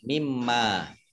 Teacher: Ini harusnya min dan ma ya, min dan ma, nun sukun bertemu dengan huruf mim, maka menjadi idgham bi gunnah. Tapi nun sukunnya dihilangkan, langsung di mimma. · Tapi nun sukunnya dihilangkan, langsung di mimma. Mimnya ada tasdidnya, ini dibaca menggunnah atau mendengung, ditahan 2 harokat.